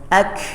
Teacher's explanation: ketika dia bersukun atau berdiri sendiri dia cenderung kepada Hames atau bersisa nafas ya Ka Ka ada ada ada hamusan nafasnya ak ketika disukunkan · Ya, ada hembusan nafasnya. Ak, ketika disukunkan terdengar jelas bahwa dia memang ada hembusan nafasnya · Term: hams